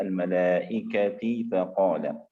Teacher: إذا أردنا أن نوصل الملائكة نلفظها تاء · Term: التاء المربوطة